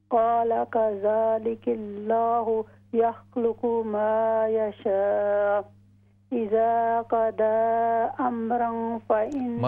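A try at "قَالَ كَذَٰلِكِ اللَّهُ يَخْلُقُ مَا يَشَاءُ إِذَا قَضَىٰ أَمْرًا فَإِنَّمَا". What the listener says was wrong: मद को लंबा करें, इज़ा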